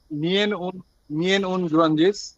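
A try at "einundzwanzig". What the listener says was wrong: এই ইএন কেন আইন প্রথমে ছিলেন না ক্লাসে? সোয়ানসিস সোয়ানসিস সোয়ানসিস মানে 20, সোয়ানসিস সোয়ানসিস প্রত্যেকটার সাথে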